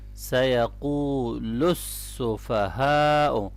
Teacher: سیقول، اور جب اس کو ملائیں گے آگے سین کے اوپر شد ہے تو سیقول السفہاء۔ اب یہاں پر ہا کو ہم ہیوی پڑھیں گے گلے کے نچلے حصے سے، اور یہاں پر بڑی مد ہے تو اس کو آپ نے زیادہ کھینچنا ہے، ٹھیک ہے۔